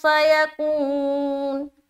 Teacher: اب نون کے اوپر وقف کریں گے، پیش ہٹ جائے گا، سکون لائیں گے، کو میں واو مدہ کر رہے ہیں۔